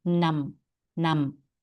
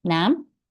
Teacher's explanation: this word is not num not midtone it's got a high tone